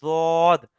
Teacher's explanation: জিহববার পার্শ্ব ও পার্শ্ববর্তী মাড়ি হতে দ উচ্চারিত হয়